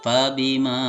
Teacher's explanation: Dikarenakan dia ada fathah. Nah, fathah diikuti alif. Jadi bacaannya 2 harokat. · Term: mad tabi'i alif